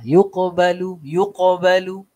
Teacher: qaf berbaris mati, ini perlu kepada qalqalah